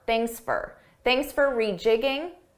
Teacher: I said, thanks for rejigging your schedule. Notice how for sounded like an unstressed fur.